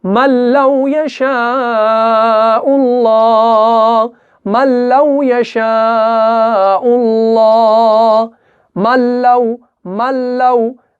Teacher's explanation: लाम और रॉ जो है इस सूरत में क्या होगा, इदगाम बगैर गुन्ना के होगा, यानी इदगाम कामिल होगा। कैसे, मल्लौ यशाउल्लाह, मल्लौ यशाउल्लाह, मल्लौ, मल्लौ।